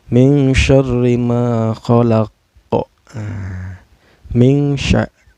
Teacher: Karena ada nun sukun bertemu dengan huruf ikhfa yaitu shin ya. Cara bacanya samar ya, samar sambil dengung ya.